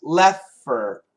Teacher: the F is one of those sounds that can cancel the T. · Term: canceling the T